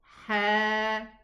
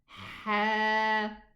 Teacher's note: Ha. Get it from the middle part of the throat. Ha. It's not just air, it's friction. Ha. So here, with just the movement, it's going to be ha, hu, he.